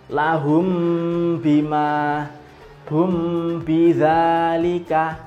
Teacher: Ikhfa Syafawi ikhfa yang bongsu bibir yang bangsa bibir itu ya bacanya ditahan dua ketukan atau dua harokat boleh lebih sedikit karena untuk merasakan dia sampai di Pangkal hidung